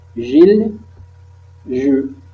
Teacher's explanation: Sur oral, comme chi, chu. Maintenant les sons je, constrictive, fricative, prédorso-post-alvéolaire, sonore. Nous avons des vibrations G. Par exemple, Gilles, je.